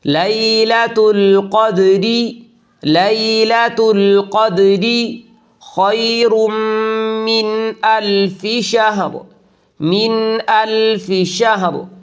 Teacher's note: یہاں را پر نہیں ہوگی بلکہ باریک ہوگی، اس لیے کہ ہم اس کو وقف کے ساتھ نہیں بلکہ ملا کر پڑھ رہے ہیں، یہاں وقف نہیں ہے، اور چونکہ را کے نیچے زیر ہے اس لیے اس کو باریک پڑھیں گے۔